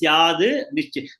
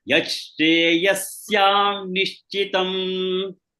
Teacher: Instead of syad, you say syan nishchitam.